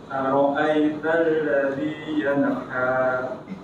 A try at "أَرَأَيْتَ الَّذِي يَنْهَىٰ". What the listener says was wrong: Yanha. alladhi yanha. Masih yana, kurangi mantulnya.